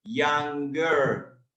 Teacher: the er becomes an ah sound